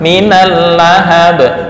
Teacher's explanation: Lamnya nggak boleh lama-lama, hanya lewat.